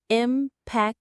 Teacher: The stress is on that second syllable.